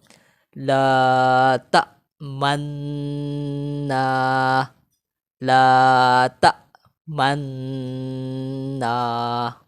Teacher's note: لام الف زبر لا، تا حمزہ زبر تا، لا تا، میم نون زبر من، لا تا من، نون الف زبر نا، لا تا من نا، لا تا من نا۔ جب یہاں پر نون جب پڑھ لیں گے نا تو ہونٹ کو گول کر کے پیش کا اشارہ دیں گے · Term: اشمام